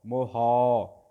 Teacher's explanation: ਹਾਂਜੀ ਸਾਧ ਸੰਗਤ, ਜਿਹੜਾ ਮੰਮੇ ਨੂੰ ਔਂਕੜ ਹੈ ਇਹ ਲਘੂ ਮਾਤਰਾ ਹੈ, ਜਿਹੜੀ ਹਾਹੇ ਨੂੰ ਕਨੌੜਾ ਹੈ ਦੀਰਘ ਮਾਤਰਾ ਹੈ। ਸੋ ਪਹਿਲੀ ਜਿਹੜੀ ਮੰਮੇ ਦੀ ਔਂਕੜ ਹੈ ਇਹ ਸੰਕੋਚ ਕੇ ਪੜ੍ਹਨੀ ਹੈ, ਹਾਹੇ ਨੂੰ ਕਨੌੜਾ ਲੰਬਾ ਕਰਕੇ ਪੜ੍ਹਾਂਗੇ। ਮੰਮੇ ਔਂਕੜ ਮੋਹ, ਹਾਹੇ ਕਨੌੜਾ ਹੌ, ਮੋਹਾ।